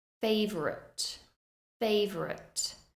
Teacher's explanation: we do reduce that second syllable favorite favorite we don't entirely lose it but you can hear